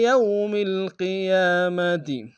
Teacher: یوم واو لین ہے بغیر کھینچے پڑیں گے